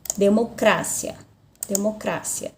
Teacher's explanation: Mas, na língua espanhola, a sílaba tônica é no cra.